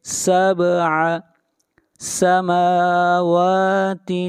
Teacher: خلق سبع، با کے اوپر قلقلہ کریں گے ، سبع سماوات، سماوات، میم کو کھینچ کر پڑھیں گے ایک